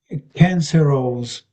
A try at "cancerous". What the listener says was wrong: So it's the ending isn't quite there really. So it's cancer and danger, of course. So cancer, it's actually cancerous. So sort of imagine maybe that the O isn't there, perhaps. cancer and us, pretty much.